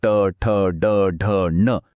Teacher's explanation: यांचा उच्चार करताना आपली जीभ टाळूच्या मागच्या बाजूला ज्याला मूर्धा म्हणतात तिथे लागते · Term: मूर्धन्य वर्ण, मूर्धन्य